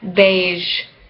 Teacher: voiced, voiced, post-alveolar, fricative